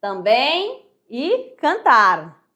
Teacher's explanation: O an e o en, em final de palavras, representam o ditongo decrescente nasais.